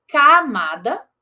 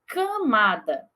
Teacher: camada sem a nasalidade e camada com a nasalidade